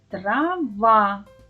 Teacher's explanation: наголошений склад в слові трава другий